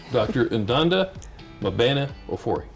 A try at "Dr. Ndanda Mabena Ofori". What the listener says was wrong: It was very close. You put a stress on an N. Just soft Dr. N.